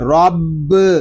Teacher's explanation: را کو پر پڑھیں گے کیونکہ را کے اوپر زبر آ رہا ہے، با مشدد ہے، اس کو جماؤ کے ساتھ ادا کریں گے، رب۔